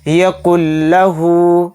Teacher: اس میں غنہ نہیں کریں گے، اس کو بلا غنہ کے ہم پڑھیں گے، جلد پڑھیں گے اور نون سائلنٹ اس میں ہو جائے گا. لام کے اوپر تشدید آ گئی تو اس وجہ سے یہ لام اس کاف کے ساتھ مل کر پڑھا جائے گا. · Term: ادغام بلا غنہ